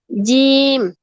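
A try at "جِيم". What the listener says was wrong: জিম আপনি হচ্ছে জিহ্বার আগা দিয়ে উচ্চারণ করতেছেন, জিহ্বার আগা ব্যবহার করবেন, জিহ্বার মাঝখান উপরে তালুতে লাগবে। প্রত্যেকবার এভাবেই বলবেন, জিম বলবেন না। জিম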